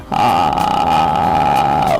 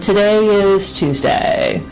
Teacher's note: maintained in a relatively loose position there's very little air flow then the voice becomes very sort of a popping or a creaking sound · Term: vocal fry